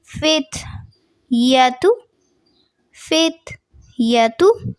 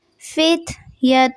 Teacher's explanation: تھوڑا سا آپ کو بتاتی چلوں ہمس کیا ہوتا ہے کہ سانس کو باہر کی طرف نکالنا. تو جب آپ تا ادا کر رہے ہوں گے تو ہلکا سا سانس باہر کی طرف خارج ہوگا